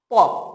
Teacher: যখনই ধ্বনিটা উচ্চারণ করবে তার আগে ঠোটের সঙ্গে ঠোট লেগে থাকবে তারপর উচ্চারিত হবে